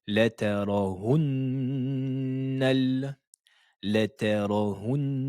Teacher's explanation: Il faudra dédoubler le N juste ici en phonétique et prononcer son son au niveau de la cloison nasale. Au niveau de la durée du temps, il faut prononcer le temps le plus complet. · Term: shadda